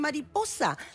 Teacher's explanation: En mariposa, la sílaba tónica es la anteúltima, es po. Mariposa es una palabra grave, ahí ve...